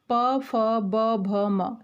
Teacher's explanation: जो प वर्ग है जब हम उसको बोलते हैं तो हमारे दोनों होठ टच होते हैं